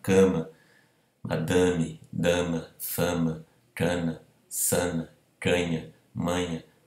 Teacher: quando a sílaba tônica é seguida numa outra sílaba de uma consoante nasal como M, como N, como Nh, ela é sempre nasalizada.